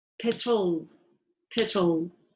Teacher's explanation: the schwa is very relaxed it happens because it has to happen between the r and the l there is a thunder but you don't make any effort okay